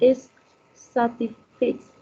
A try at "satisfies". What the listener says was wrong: Satisfies. Yes.